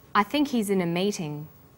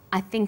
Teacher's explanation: when these words are linked the h is dropped